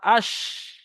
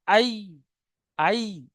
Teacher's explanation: জিম শিন এবং ইয়ার মাখরাজ হলো জিভের মাঝখান এবং তার বরাবর উপরের তালুর সাথে লাগিয়ে উচ্চারিত হয়